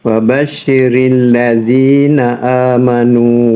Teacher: Kemudian syin tu kenalah bersembur. Sifat dia sifat tabasyir.